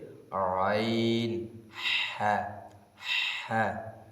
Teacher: দুই নাম্বার মাখরাজ হলকের মধ্যকার এই হলকের মধ্যকার হলকের মধ্যতে আইন হা